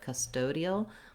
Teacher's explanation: That's an unaspirated T. It sounds a little bit like a flap T.